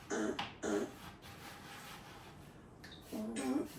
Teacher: And next is Q, but then the sound that you will pronounce, when you combine this U and N, you get the nasal sound un